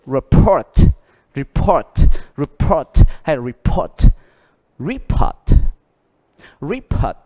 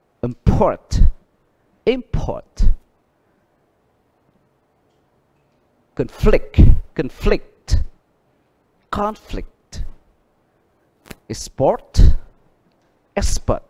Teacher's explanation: động từ nhấn âm 2 mà danh từ nhấn âm đầu thì nó sự đối lập